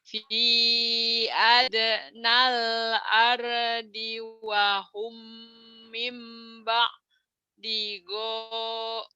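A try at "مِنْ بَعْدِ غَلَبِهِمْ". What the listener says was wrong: Go-nya pendek. Mimba di gola bihim. Mimba di.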